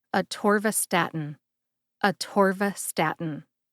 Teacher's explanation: Emphasize TOR and STAT. STAT gets the most emphasis.